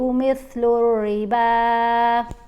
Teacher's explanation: را کے نیچے زیر آ جائے تو اس کو باریک پڑھتے ہیں